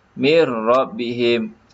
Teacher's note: dalam bacaan seolah Nun ini tidak ada · Nun ni seolah-olah tidak wujud. Dalam penulisan ada, tetapi dalam bacaan seolah-olah nun ini tidak ada. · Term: idgham bilagunnah